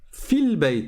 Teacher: je passe du fa au l directement. Le alif on ne le prononce pas parce que c'est le alif de liaison. comme il y a un mot avant, ben on va pas le prononcer.